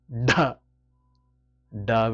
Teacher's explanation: du du with a strong gush of breath